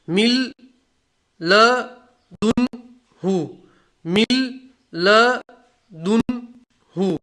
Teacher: نون کے بعد لام آیا تو نون کا لام میں ادغام ہوگا، ادغام میں تام، مطلب نون کو ہم نے پڑھا ہی نہیں.